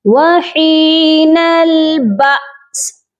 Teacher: جب حمزہ سائلنٹ ہوتا ہے، ساکن ہوتا ہے، تو اس پر ہم جھٹکا دے کر پڑھتے ہیں